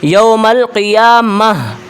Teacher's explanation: وقف کے بعد تا کا نہیں ہا کا ساؤنڈ نکالیں گے